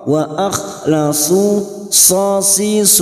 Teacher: huruf Shad yang berharakat dumah diikuti wau sukun dua harakat kita panjangkan